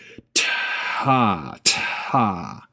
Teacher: there's a moment after the T starts, where air is just kind of flowing out. T, t, and then the vowel starts, ta.